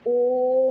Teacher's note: प्लुत स्वर में दीर्घ स्वर से भी ज्यादा समय लगता है।